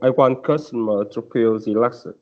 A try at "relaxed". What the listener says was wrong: It's not relaxed, it's relaxed. it's the T sound at the end, not relaxed. Relaxed. Relaxed.